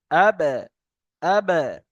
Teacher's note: বার উপরে সাকিন এসছে। বা হরুফের কলকলার অক্ষরের মধ্য থেকে। তাই একে ধাক্কা দিয়ে পড়তে হবে